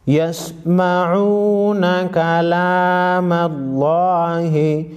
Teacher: लफ्ज़ अल्लाह से पहले ज़बर है, लफ्ज़ अल्लाह को मोटा पढ़ेंगे।